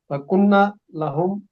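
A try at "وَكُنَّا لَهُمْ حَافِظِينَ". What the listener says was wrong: हाँ जी, कुन्ना को लंबा करें ना, वकुन्ना लहुम हाफिजीन। नहीं नहीं, वो कुन्ना का पहले भी आपको बताया था ना,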